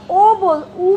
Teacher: উ বলছো ঠোঁট কুঞ্চিত হচ্ছে